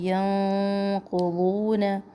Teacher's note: نون ساکن پر ہم آواز کو چھپائیں گے، ناک میں لے کے جائیں گے اور یہ آواز موٹی ہوگی، قوف کی وجہ سے موٹا اخفا کریں گے.